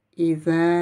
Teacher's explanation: Vous avez ensuite un alif avec une vague. C'est le son prolongé E en 4-5 temps, plus de 4 temps.